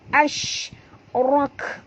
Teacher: ini adalah bunyi tafashi, angin yang kuat